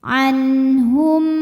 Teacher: Kemudian ada hukum izhar syafawi. Karena mim sukun menghadapi huruf selain mim dan ba yaitu huruf wau. Maka mim dibaca dengan jelas.